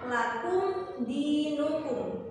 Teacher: dibaca jelas atau terang selama 1 harokat atau 1 ketukan. Jadi tidak boleh dibaca sama atau dibaca dengung. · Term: idhar syafawi